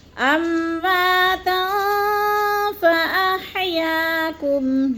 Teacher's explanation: امواتا وا میں الف مد ہے، ایک الف 2 حرکات کے برابر لمبا کر کے پڑھنا ہے، اور تن میں جو ہے اخفا ہے، 2 زبر تنوین کے بعد فا آ گیا ہے تو ادھر اخفا کریں گے، آواز کو ناک میں چھپا کر پڑھیں گے، جیسے امواتا فاحیاکم، یا میں الف مدہ ہے۔